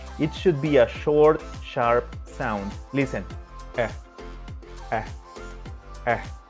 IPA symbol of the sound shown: æ